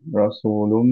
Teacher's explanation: লুম ধরে রাখলাম বিকজ হচ্ছে মিম গুণনা